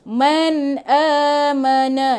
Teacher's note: iaitu jelaskan bunyi nun mati. Sebab nun mati bertemu dengan hamzah. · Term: izhar halqi